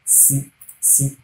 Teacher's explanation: The tip of the tongue is just raised towards the alveolar ridge, and then you pronounce it C, as we have letter C in English. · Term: fricative sound